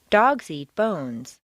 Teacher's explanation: change is primarily used to introduce new information this means that when you're making a statement for the first time you'll stress the nouns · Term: noun intonation